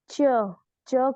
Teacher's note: ऊपर वाला तालू से जीभ अटक रही है